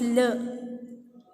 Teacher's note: What happens in the case of lateral is that the oral passage is blocked. The oral passage is blocked at the center and open in the two sides of the tongue.